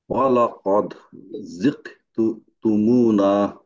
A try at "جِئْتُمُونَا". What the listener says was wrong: আপনার জিক হয়ে গেল কেন? জি জি। আচ্ছা, জি তুমুনা।